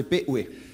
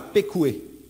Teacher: Et P-oué avec une glottale qui, normalement, correspondait autrefois à Pékoué.